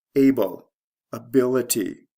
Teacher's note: the stress shift is from the first to second syllable